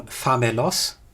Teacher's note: that L stands before a back vowel, and so that kind of L was a dark L, like in English hill, and because of that dark L we get a different vowel weakening phenomenon and we end up with famulus.